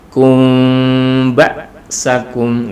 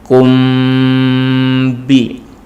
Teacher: Jadi kumnya di sini samar, kemudian disertai dengan dengung, tetapi tidak sampai tertutup rapat, ada sedikit rongga ataupun furjah ya. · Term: ikhfa syafawi